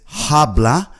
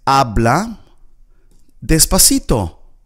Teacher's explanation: Now remember the H in Spanish is silent. So we do not pronounce it as habla.